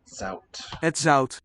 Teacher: So an original zalt. The L, we say vocalized, became the vowel and a diphthong ow, and then dropped out.